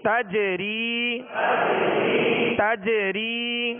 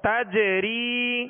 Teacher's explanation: جیم پر قلقلہ کریں گے